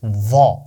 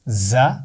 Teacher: व की आवाज मोटी है लेकिन उसमें सख्ती नहीं होती ज की आवाज बारीक है और इसमें सख्ती यानी सीटी भी होगी